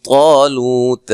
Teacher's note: طا کو موٹا ادا کریں گے، الف مدہ ہے، لو واو مدہ ہے